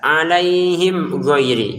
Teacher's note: dibaca dengan jelas alaihim ghairi, jangan dibaca dengung atau samar